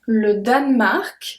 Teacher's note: so we don't pronounce the E in the middle if you listen well